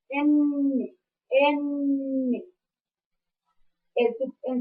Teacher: la n al pronunciarla estamos eh dejando salir tanto el aire por la nariz por y por la boca eh su punto de articulación es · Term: oclusivo nasal